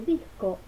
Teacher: El ejemplo de disco nos muestra que la delante de velar y después de vocal I se transforma en fricativa dorsopalatal sorda, es decir, esperaríamos una dorsovelar, pero por efecto de la vocal palatal I aparece esta consonante dorsopalatal